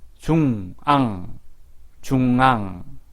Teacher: 앙은 콧소리, 비음이라고 하죠. 콧소리도 같이 납니다. 콧소리는 콧구멍에서 바람이 나와야 합니다.